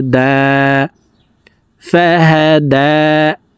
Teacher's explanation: হরফের উপরে খারা জবর নিচে খারাজের উপরে উল্টা পেশ হইলে ওই হরফকে ১ আলিফ টানিয়া পড়িতে হয়। তো এখানে দাল হরফের উপরে খারা জবর থাকার কারণে এই দালকে ১ আলিফ টেনে পড়ব।